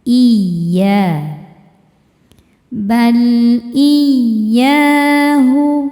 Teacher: Cara bacanya cukup kita pakaikan nabr atau naikkan intonasi suara.